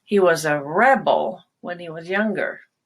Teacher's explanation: Rebel as a noun, you have the stress on re, and you want to go high on that and stronger and longer.